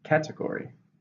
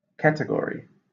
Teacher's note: How many syllables? Category. 4, stress on the first.